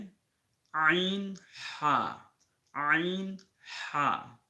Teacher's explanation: দুই নাম্বার মাখরাজ হলকের মধ্যখান হইতে দুইটি হরফ উচ্চারিত হবে